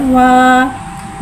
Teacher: वाव को एक अलिफ यानी 3 हरकत के बराबर खींच के पढ़ेंगे। वाव को होठों की गुलाई के साथ अदा करके पढ़ेंगे। वाव के बाद ज़बर है, ज़बर को मुँह खोल के अदा करके पढ़ेंगे।